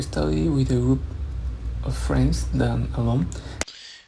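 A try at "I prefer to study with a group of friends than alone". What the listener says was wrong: You're kind of slurring your words there. I think you're saying I prefer. So that word prefer, you need to pronounce the P and the F more clearly.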